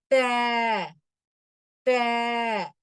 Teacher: மேல் பற்களின் வேர்களை நாக்கின் நுனியால் தொடவும்